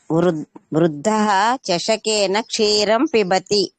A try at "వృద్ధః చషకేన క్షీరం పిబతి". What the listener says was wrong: Okay, ఉత్తమం.